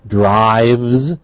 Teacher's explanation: Drives, however, is a V is voiced. We have a Z at the end.